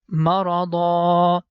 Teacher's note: As you know that here we have one of stopping symbol, and if we are going to stop on this word, so the last sign is fathatain, I mean the last syllable is dhan, and it becomes dha at the time of stop